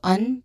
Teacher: we begin with un, which has a short, quick, and stressed vowel sound here,